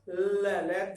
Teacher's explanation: जैसे उच्चारण करके देखना, ल। जीभ ऊपर चलेगी, थोड़ी सी राउंड होती है हल्की सी, और हवा कहां से निकल रही है? हमारे दोनों साइडों से। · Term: पार्श्विक